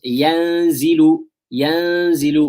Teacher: Some air is coming out of the mouth, some air is passing through the nose. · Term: ikhfa